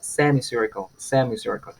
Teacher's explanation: el stress va a ir en la primera sílaba del prefijo